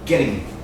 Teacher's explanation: If you say it fast, it sounds like a D to me.